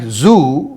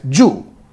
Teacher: for most Telugu speakers a word like Zoo beginning with a sound Z is naturalized as Jew